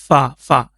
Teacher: اوپر والے دانت کا جو کنارہ ہے وہ نیچے والے ہونٹوں کے تر حصے کے ساتھ جب لگے گا پھر یہ فا ادا ہوگا